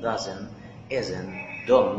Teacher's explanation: طبعا اتفقنا قلنا ما فيش حاجه اسمها don't ولا isn't ولا doesn't. بلاش تنطق التي لما يبقى جايه قبلها ان